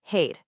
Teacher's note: That Armenian R sound, you're going to want to roll it.